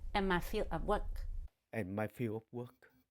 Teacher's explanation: he missed the d at the end of field